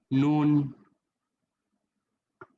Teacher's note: জিহ্বার আগা উপরের পাটির দাঁতের মাড়ির গোড়া থেকে একটু উপরে লাগিয়ে